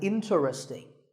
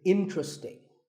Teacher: This is mispronounced sometimes as interesting, but there are only 3 syllables, sting, and the stress is on in, so the word is interesting